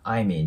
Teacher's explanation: 状況かっていうと、同じシチュエーションなので、I'm▁in▁the▁same▁situation▁になります。で、さっきからやってる通り、誰々と同じっていうことなので、as▁her▁を置いてます。じゃあこれもね、発音を見ていこうと思うんですけど、まず▁I'm▁in▁the▁の部分ですね。 ここの▁I'm▁in▁も▁M▁の音で終わって、次母音なので、子音足す母音はリンキングするので、I'm▁in▁になります 。I'm▁in▁the。で、その後の▁same▁situation▁なんですけど、この▁situation▁がね、やや難しいと思います。日本語だったら、シチュエーションっていう感じで、C▁の音なんですけど、英語では、C▁の音に近くなります。まあ、数にちっちゃい▁E▁とか、で、ちょっと▁A▁っぽくなったりもしますね。situation。でね、ここの▁A▁の部分も、シチュエ